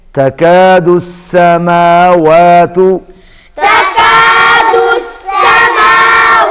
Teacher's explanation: چھوٹا کاف ہے اور واو پر ہونٹ گول ہوں گے